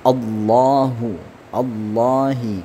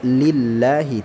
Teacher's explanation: Lillahi, lam di sini lafzul jalalahnya ya, lafzul jalalah itu khusus untuk kalimat Allah ya. Nah, li dibaca tipis disebabkan apa? Karena harakatnya ini harakat kasrah